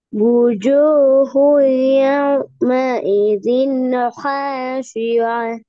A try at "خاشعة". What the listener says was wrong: திருப்பி ஹேண்டு வருது. ஹே இல்ல அது ஹா. வானத்தை நோக்கி வரணும். இப்படி வாயில வராது.